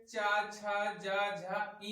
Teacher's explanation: इन सभी वर्णों का उच्चारण स्थान ताल से होता है